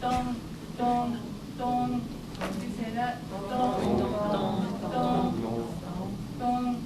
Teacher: pronunciation of N is not N, but just nasal sound.